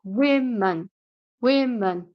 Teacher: with men women the stress is on the first syllable